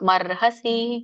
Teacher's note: ಮೊದಲು ರ ಬಂದು ಆಮೇಲೆ ಹ ಹೇಳಬೇಕು